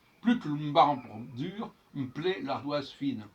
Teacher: le E de marbre ne s'entend pas, de toute façon, et c'est le bre qui précède qui doit s'entendre